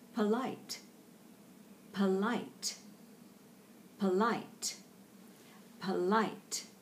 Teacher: the first syllable there is a very neutral vowel just polite because the emphasis is on polite